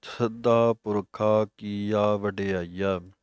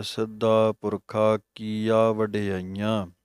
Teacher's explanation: ਹੁਣ ਵੇਖੋ, ਜਦੋਂ ਸ੍ਰੀ ਰਹਿਰਾਸ ਸਾਹਿਬ ਜੀ ਦਾ ਪਾਠ ਕਰਾਂਗੇ ਉਦੋਂ ਪਾਠ ਆਵੇਗਾ ਸਿੱਧਾ ਪੁਰਖਾ ਕੀਆ ਵਡਿਆਈਆ, ਅਤੇ ਇਹੀ ਪਾਠ ਅੱਗੇ ਜਾ ਕੇ ਆਉਂਦਾ ਹੈ ਸਿੱਧਾ ਪੁਰਖਾ ਕੀਆ ਵਡਿਆਈਆਂ। ਵਡਿਆਈਆਂ ਬਿੰਦੀ ਲਾ ਕੇ ਨੱਕ 'ਚ ਬੋਲਣਾ ਹੈ